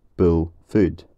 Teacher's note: And that makes our job easier, because it means that there's only one vowel that we have to find in the list. In modern Scots, there's a merger between the vowel in words like bull and the vowel in words like food